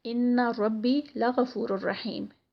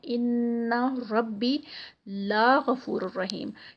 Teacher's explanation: تو یہ جو لا غفور الرحیم ہے، اس کو جب لا غفور الرحیم کرتے ہیں تو میننگ ٹوٹل چینج ہو جاتا ہے، یعنی ذرا سا ہم نے کیا کیا کہ لا کو کھینچ دیا، اس کو مد بنا دی